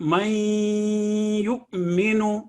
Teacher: ادغام میں نون کی ساؤنڈ ختم ہو گئی، نیزل ساؤنڈ رہ گئی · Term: ادغام بالغنہ